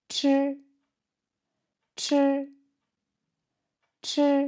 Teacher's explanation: quand on prononce ch, le papier bougera, car il y a plus d'air qui sort plus fortement